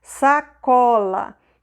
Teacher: Então eu tenho aqui o sa e o lá são sílabas mais fracas. São faladas com menos força, então elas não levantam muito, não são muito elevadas.